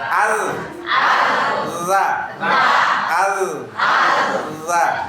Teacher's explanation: ujung lidah dan ujung dua gigi seri pertama yang atas